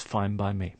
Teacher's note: we have a n sound at the end of fine, followed by a b sound in by. So the n sound starts to sound like a m. So it's fine by me.